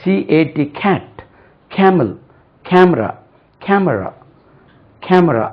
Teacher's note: இது க வரும்போது ஒரு சின்ன H வருது பாருங்க.